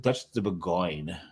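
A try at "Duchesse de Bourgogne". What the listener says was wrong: That's Duchess de Bourgogne. De Bourgogne. G's. You don't pronounce the G's at all. De Bourgogne.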